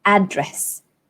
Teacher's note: So you stress on the first syllable, address.